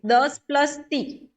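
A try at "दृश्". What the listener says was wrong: द्रस नहीं, द्रुस बोलना है।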